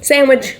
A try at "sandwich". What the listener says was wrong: Sandwich? Is there a G on the end of that?